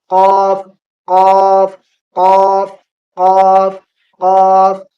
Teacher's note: قاف یہ منہ بھر کر بولا جاتا ہے اور پر بولا جاتا ہے